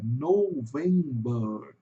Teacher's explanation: o November, em inglês, vai ter um som de OU entre o O e o V aqui, vai ter, porque é uma vogal longa. November. E esse no final, aqui, ó, você tem um schwa com um Rzinho pela metade.